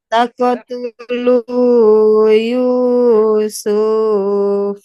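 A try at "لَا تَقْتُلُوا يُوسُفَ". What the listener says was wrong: Itu su-nya enggak panjang. Jadi kalau kita wakaf jadi langsung Yusuf. Yusuf.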